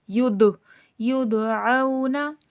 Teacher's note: दाल साकिन है तो आवाज़ पलट कर सुनाई देगी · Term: खलखला